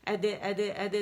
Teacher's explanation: دال باریک قلقلہ کریں گے آپ